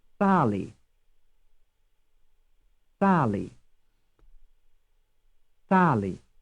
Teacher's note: Which syllable is stressed, the first or the second? The first.